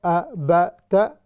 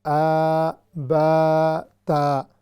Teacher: ایک کو لمبا نہیں کرنا ا ب ت، دوسرے کو لمبا کرنا ہے ا ب تا